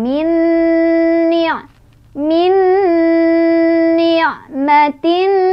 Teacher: Idgham bigunnah karena ada nun sukun bertemu dengan huruf nun. Cara bacanya masukkan langsung ke huruf nun kedua ya sambil berdengung